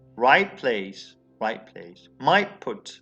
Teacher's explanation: alveolar plus bilabial becomes bilabial